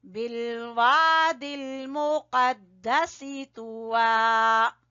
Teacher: قاف کو موٹا پڑھنا ہے